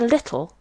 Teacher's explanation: in the word little there is an example of a clear L and the dark L